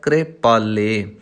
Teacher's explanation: ਕੱਕਾ ਜਿਹੜਾ ਹੈ ਉਹ ਇੱਥੇ ਪੂਰਾ ਨਹੀਂ, ਕੱਕਾ ਅਧੂਰਾ ਹੈ, ਅੱਧਾ ਹੈ। ਇਸ ਲਈ ਥੋੜ੍ਹਾ ਜਿਹਾ ਕੱਕੇ ਨੂੰ ਬੋਲਣ ਲੱਗਿਆਂ ਜਲਦੀ ਕਰਨੀ ਹੈ।